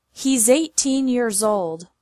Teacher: pronounced as Z he's 18 years old he's 18 years old you can see that the s is like a connection in he's 18